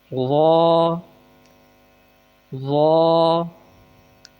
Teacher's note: ضاد، طا، زبان کی نوک کو اوپر کے دانتوں کی جڑ سے ملانا ہے۔ طا طا، ضا، زبان کا سرا اور اوپر کے دانتوں کے اندرونی کناروں سے ملا کر ادا ہوگا